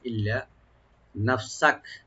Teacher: ইল্লা এখানে লামটাকে ডাবল করে একালিফ টানবেন, গুণনা হবে না। ইল্লা নাফসাক, নাফসাক নুনটাকে ওপেন রাখবেন আর সিনটাকে ওপেন রাখবেন।